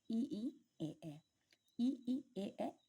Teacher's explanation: जिन स्वरों का उच्चारण जीव के अग्र भाग से होगा वे स्वर अग्र स्वर कहलाते हैं